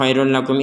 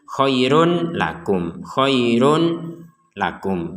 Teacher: kita membacanya dengan menggabungkan damma ganda atau tanwin ke dalam huruf 'lam'. Jadi, itu tidak dibaca dengan jelas.